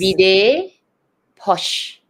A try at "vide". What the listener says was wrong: close, but there's no accent on this E. Vid. It's vide. Yes. Yeah. So it's vid